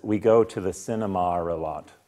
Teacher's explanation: With a long ah in cinema, Americans don't use cinema by and large, and when we do, it has a short a or a schwa.